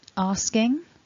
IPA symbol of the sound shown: ŋ